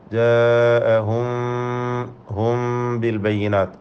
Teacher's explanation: ഇഖ്ഫ ഷഫവി നൽകി അവ്യക്തമാക്കി മണിക്കണം.